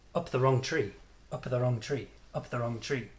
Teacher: Can you hear how all this is kind of squashed together and linked into almost one sound?